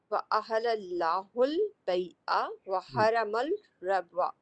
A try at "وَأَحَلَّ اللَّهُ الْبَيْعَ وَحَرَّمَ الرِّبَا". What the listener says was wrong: حرم نہیں. اب کیا ہو گیا اس میں کچھ بینائی وغیرہ میں تشدید نہیں دکھ رہی ہے یا کیا نہیں دکھ رہا ہے؟ حرما نہیں، حرما